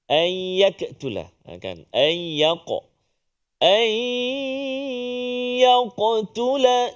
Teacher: qaf Qalqalah jaga jangan tertukar dengan Kaf pula